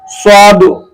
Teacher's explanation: জিহ্বার আগা সামনের নিচের দুই দাঁতের পেট ও আগার সঙ্গে লাগিয়ে উচ্চারণ করতে হয়